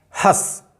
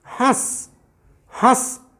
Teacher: ये केवल मुख से हुआ, इसमें देखिए ध्यान से, हंस, हंस मुख से भी हुआ, नाक से भी हुआ, आवाज़ नाक से भी आई है, हंस, हस, हंस, हस, हंस। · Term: अनुनासिक